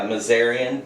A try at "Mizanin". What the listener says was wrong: There's no R. Mizanin.